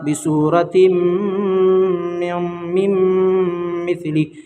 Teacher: ये जो है मीम, मीम में मिलेगा। ठीक है, नून साकिन के बाद हुरूफ़ यमीन के 4 हरफों में से मीम है, इसलिए गुन्ना के साथ मिलाकर पढ़ेंगे। इसको इदगाम माल गुन्ना और इदगाम नाक़िस भी कहते हैं।